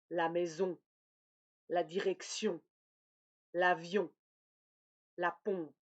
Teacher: Et finalement, la troisième nasale, c'est le O nasal. Je forme un O avec ma bouche, mais l'air passe par le nez. Donc, bouche fermée, lèvres arrondies, langue en arrière et l'air passe par le nez. · Je forme un O avec ma bouche, mais l'air passe par le nez. Donc, bouche fermée, lèvres arrondies, langue en arrière et l'air passe par le nez. C'est le plus fermé.